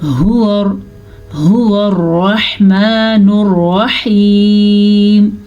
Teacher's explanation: ہا چھاتی سے نکلتی ہے، اگر آپ اس کو صحیح تلفظ سے نہیں پڑھیں گے تو یہ لفظ غلط ہو جائے گا۔